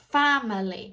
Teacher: The stress is at the beginning. So that A is a very traditional A.